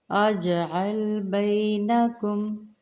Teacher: خیرون، خیرون، فا آ، فا آ، حمزہ زبر آ، فا نہیں ہے یہ، فا آ، عی، عین زیر یا عی، نونی، فَأَعِینُونِی بِقُوَّۃ، بقوہ کہہ کے وقف کریں، وہ زیادہ بہتر ہے۔ اجعل، اج جیم پر جزم قلقلہ کریں گے